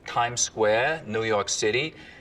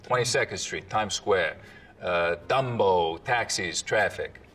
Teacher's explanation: The tongue tip hits the teeth, or close to them, on TD and N sounds instead of, a little further back. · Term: tongue tip on the teeth